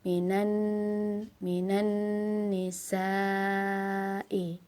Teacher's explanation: di atas alif ada tanda bendera, kita baca 4 harokat ya